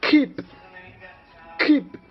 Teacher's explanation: The first thing is voiceless because it doesn't have vibration. Then it's velar because the tongue touch the soft palate, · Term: consonant K